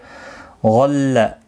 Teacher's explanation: غل غین مستعلیہ ہے، پر پڑھا جائے گا